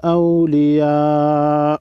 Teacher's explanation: بڑی مد کو 5 الف کے مقدار کھینچ کر پڑھیں گے